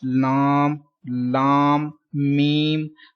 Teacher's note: Some people pronounce lam like they take sound into nose. So you don't take sound into nose.